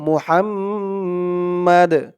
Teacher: থামার কারণে এই দালের নিচে যে দুই জের তানবিন আছে এটা সাকিন হয়ে যাবে